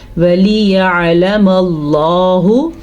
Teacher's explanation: لفظ اللہ کو ہم نے موٹا یعنی کہ پر پڑھنا ہے کیونکہ لفظ اللہ سے پیچھے والے حرف پہ زبر ہے